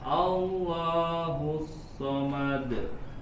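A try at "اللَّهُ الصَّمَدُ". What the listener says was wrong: Allahus samad. Seperti masih ada jeda sedikit pada qalqalahnya. Langsung Allahus samad. Samad langsung mantul.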